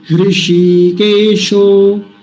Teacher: दीर्घ ईकार, यानी बड़ी ई की मात्रा, ये वाली लंबा खींचना है, इसको जल्दी नहीं बोलेंगे